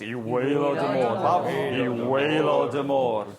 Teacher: you can't say I waelod y môr without dipping your voice